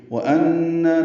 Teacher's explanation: نون مشدد پہ غنہ اور کھڑا زبر ہے